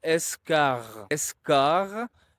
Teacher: here the R is placed before a voiced consonant, G, the G. So it's going to be voiced as well